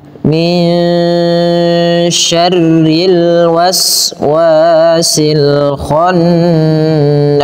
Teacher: Cara membacanya di antara bacaan izhar dengan idgham, sehingga min syarri ya, min syarril, rinya tipis karena dia berharakat kasrah